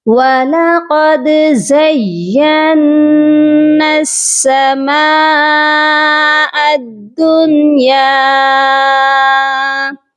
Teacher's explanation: یہاں پر یہ مد جو ہے یہ مد متصل ہے، اس کو 3 سے 4 الف کے برابر لازمی لمبا کریے گا